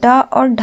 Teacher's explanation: जीहवा की नोक जो होती है वो तालू को झटके से स्पर्श करके हट जाती है उन्हें उत्क्षिप्त व्यंजन कहते हैं।